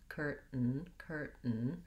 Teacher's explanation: the ipa from the dictionary that there is no vowel sound we go right from the t to the n and this is what's called a syllabic n and basically it means that the n consonant sound functions as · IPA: /ˈkɝtn̩/